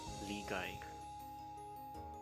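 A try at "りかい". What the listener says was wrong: Because we haven't learned the G yet. That one is the Dakten and Han-Dakten. So this is Likai.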